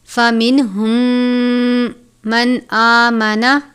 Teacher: فَمِنْهُمْ مَنْ آمَنَ، میم ساکن کے بعد میم مشدد ہے، ادغام میں شفوی کا قاعدہ لگتا ہے۔ میم ساکن کو میم مشدد سے ملا کر غنہ کر کے پڑھیں گے۔ من آمنہ، نون ساکن کے بعد حمزہ ہے، حمزہ حروف حلقی میں سے ہے، حروف حلقی 6 ہیں، حمزہ، ہا، عین، حا، غین، خا۔ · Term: ادغام شفوی